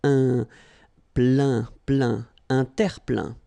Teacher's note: Remember this E-I-N nasal. So it goes in your nose